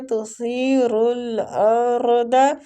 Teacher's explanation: را دونوں جگہ پہ پور پڑی جائے گی